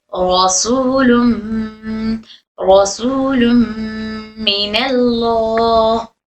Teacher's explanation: तनवीन की आवाज को मीम में दाखिल करेंगे